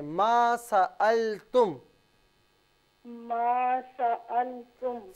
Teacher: اس میں ما کو تھوڑا کھینچیں